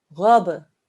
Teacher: by pressing my lips together to make the burst sound but then i bounced them apart